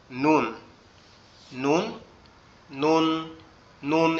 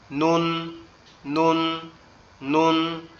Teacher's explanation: নুন অক্ষরটা সম্পূর্ণ আমাদের জিহ্বার আগা উপরের তালুর সঙ্গে লাগবে। জিহ্বার আগা উপরের তালুর সঙ্গে লাগবে, লেগে উচ্চারিত হবে নুন।